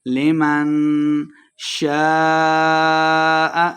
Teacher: الف مدہ ہے اور اس کے اوپر مد ہے، تو ہم نے اس کو خوب لمبا کر کے پڑھنا ہے